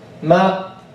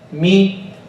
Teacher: In the fatha, the jaw goes more down. But in the kasra, less.